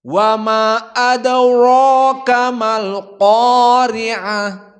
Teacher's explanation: Ra, qa, dua-duanya dalam keadaan mufakhamah di puncak derajat tafkhim, sangat kuat.